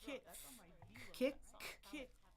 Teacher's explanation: That's why we call it a stop sound. In the back of almost my throat. That's on my velum, that soft palate.